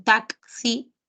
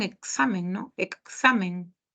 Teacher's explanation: Por ejemplo, en el caso de palabras como taxi, si te has dado cuenta, ese grafema sí tiene doble sonido. Suena como K y como S juntos. Y pasa lo mismo en examen, ¿no? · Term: bifonemáticos